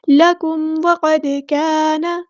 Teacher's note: میم ساکن پر یہاں پہ اظہار شفوی ہوگا، ہم نے کاف باریک پڑھنا، لائٹ لیٹر ہے، لکم وقد، قاف ہمارا ہیوی لیٹر ہے، پورا ادا کریں گے، دال ساکن پہ قلقلہ ہوگا، وقد کان، الف مد آ گیا تو مد اصلی کریں گے، نون کی زبر کو لمبا نہیں کریں گے۔